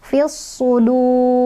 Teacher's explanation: ro yang disukunkan ini dibacanya tebal atau tafkhim, karena sebelumnya ada wawu sukun dan sebelum wawu sukunnya ada dhammah.